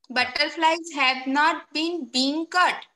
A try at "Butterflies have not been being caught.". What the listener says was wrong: लेकिन you are not asking question. आप ऐसे पूछ रहे हो जैसे आप question कर रहे हो. ये normal sentence है.